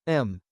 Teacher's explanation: Your lips close. The sound gradually fades back into silence.